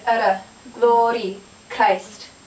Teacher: It's kind of like a short roll, a short trill. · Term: flip